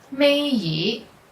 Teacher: when ye is the last character in certain words is pronounced with the second tone